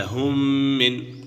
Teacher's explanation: میم ساکن کے بعد دوسری میم آ جائے تو میم ساکن میں ادغام شفوی ہوگا